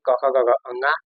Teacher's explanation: क वर्ग में जितने आएंगे क ख ग ङ ये सब कंठ से बोला जाता है